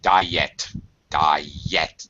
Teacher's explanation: there's a y sound there diet two syllables